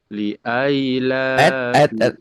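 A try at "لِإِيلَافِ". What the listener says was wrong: Li aila, li ila, bukan la aila. Li ila, li ila fi Quraisyin.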